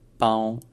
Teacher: Ensuite, il y a une diphtongue pao et il y a un ton qui se maintient à un niveau haut, à un niveau assez aigu